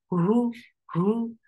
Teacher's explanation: The sound is very short. Wa hu hu from last part of your throat. For dhamma, circle your lips. The sound is very short.